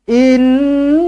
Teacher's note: Nun sabdu wajibul ghunnah dengungkan dua harakat